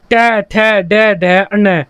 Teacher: जो आपकी जीभ होगी वह आगे से ऊपर उठेगी और ऊपर वाले जबड़े में लगेगी, उसे हम बोलते हैं मूर्धा में लगना। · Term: मूर्धन्य व्यंजन